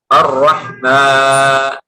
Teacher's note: mimnya ada dengung, tapi alifnya tidak